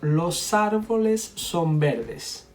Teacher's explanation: link the S with the A here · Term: Linking